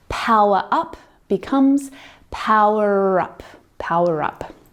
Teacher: the er is Silent unless the word Following starts with a vowel and then the R sound becomes a Linking sound